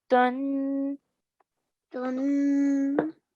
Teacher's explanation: That nasal sound at the end, just stretch for a bit longer.